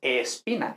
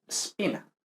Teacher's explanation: hay que tener cuidado de no añadir una E que se llama E protética. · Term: S líquida